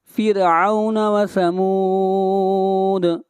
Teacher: وَهُوَ الْغَفُورُ الْوَدُودُ ذُو الْعَرْشِ الْمَجِيدُ فَعَّالٌ لِمَا يُرِيدُ هَلْ أَتَاكَ حَدِيثُ الْجُنُودِ، تا کو کھینچ کر پڑھیں گے، تا کے اوپر کھڑی زبر ہے، هَلْ أَتَاكَ حَدِيثُ الْجُنُودِ فرعون وثمود، را کو باریک پڑھیں گے، اور را سے پہلے زیر ہے، فرعون وثمود بل الذین کفروا فی تکذیب، را کو موٹا پڑھیں گے، اور را کے اوپر پیش ہے، بل الذین کفروا فی تکذیب واللہ من ورائہم محیط۔